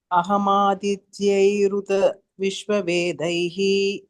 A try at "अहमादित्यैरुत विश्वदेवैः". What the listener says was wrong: Devaihi, not Vedaihi. Ahamadityeruta vishvadevaihi.